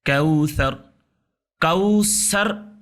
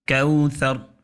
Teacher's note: سیٹی کے ساتھ اس کو تلفظ نہیں کرنا ہے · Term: ثا